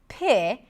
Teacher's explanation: It has an aspirated p, so we hear a little h right after